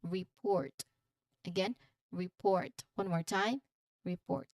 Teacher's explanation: For the pronunciation, you stress on port.